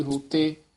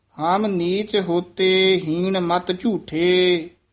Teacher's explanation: ਔਂਕੜ ਵੀ ਹੈ ਹੋੜਾ ਵੀ ਹੈ ਦਰਮਿਆਨਾ ਬੋਲੇਗਾ ਵੈਸੇ ਹੋੜੇ ਦੀ ਥੋੜੀ ਜਿਹੀ ਜਿਆਦੀ ਆਵਾਜ਼ ਹੁੰਦੀ ਹੈ